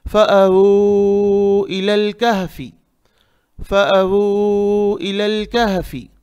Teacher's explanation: یہاں وو میں آپ 4 حرکت کے برابر کھینچیں گے